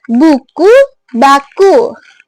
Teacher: beh ini dia bunyi bersuara, teman-teman. Jadi, pita suara ini bergetar.